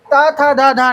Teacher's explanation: इनका उच्चारण जीभ के अग्रभाग और दांतों के स्पर्श से होता है। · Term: दांत व्यंजन